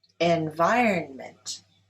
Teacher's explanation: Environment is stressed on the second syllable.